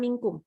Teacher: ketemu dengan salah satu huruf ikhfa ada 15 ya Dan ini Nun nya kita baca samar tidak lagi seperti Nun sempurna yang ujung lidah kena ke langit-langit · dengungnya tipis pangkal lidah turun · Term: nun sukun